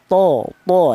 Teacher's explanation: Huruf to itu keluarnya huruf berasal dari ujung lidah menyentuh pangkal gigi seri atas